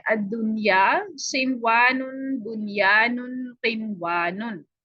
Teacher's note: हम इदगाम नहीं करते, बल्कि इस नून को जाहिर करके पढ़ा जाता है। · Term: इजहार मुत्तलिक